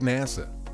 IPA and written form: ˈnæsə (NASA)